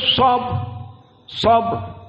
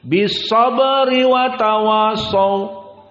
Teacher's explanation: Jika kita wakafkan bis sabr, maka mufakhamah. Namun jika wasil, wa tawasau bis sabri wa tawasau, maka di sini ra muraqqaqah.